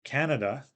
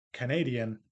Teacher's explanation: in English, Canada, the noun, has stress on the first syllable, but when we add the suffix to make it into an adjective, Canadian, the stress moves to the second syllable